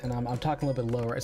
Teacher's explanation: So, it's got a little bit of vocal fry right now